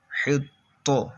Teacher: قلقلہ خوب جماؤں کے ساتھ ادا کریں گے، کیونکہ حروف قلقلہ جب مشدد ہوں تو ان میں جماؤں کرتے ہیں